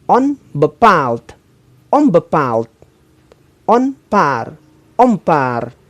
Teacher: jika bunyi n bertemu dengan bunyi pe be maka bunyi n berubah menjadi Bunyi m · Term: asimilasi, Asimilasi 6